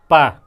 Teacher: प केवल ओंठ का स्पर्श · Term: ओष्ठ